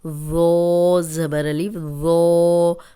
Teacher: ذو نرم بھی ہے اور موٹا بھی ہے، اس میں سیٹی کی آواز نہیں آئے گی